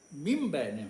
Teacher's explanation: نون کے بعد بے اگر ہوگا تو مم بین ہوگا. نون جو ہے بے جو ہے نہیں پڑھا جائے گا.